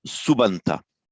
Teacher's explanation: In other words, it ends in a grammatical inflection, and the p becomes a b before a vowel